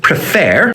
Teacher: the er sounds like the word air that tells us that the final syllable is strongest